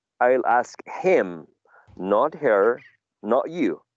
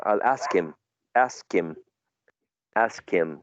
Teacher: using a weak form for him and in order to use a weak form for him we need to elide the initial sound of him